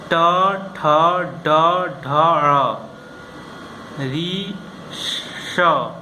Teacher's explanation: इनके उच्चारण मूर्धन्य यानी जीभ को मोड़ के करते हैं